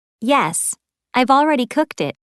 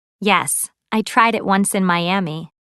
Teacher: notice how final T and D sounds in verbs are linked to the vowels that follow them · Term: linked sounds